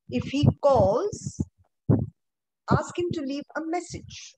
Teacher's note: So there'll be a rise and then there'll be a fall